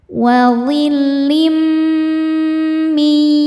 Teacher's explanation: tanwin kasrohnya dileburkan ke mim disertai bunyi dengung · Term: idgham bi gunnah